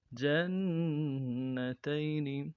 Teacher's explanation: جیم کو نون کے ساتھ ملانا ہے، نون کے اوپر تشدید ہے، زور دیں گے، اگلے نون کو نون سے ادا کرنا ہے، تا کو یا کے ساتھ ملائیں گے، یا لین ہے بغیر کھینچے پڑیں گے، نون کو نون سے ادا کریں گے۔